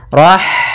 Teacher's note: ada H sukun maka di sini H mempunyai sifat yaitu sifat Hames maka alirkan nafas kita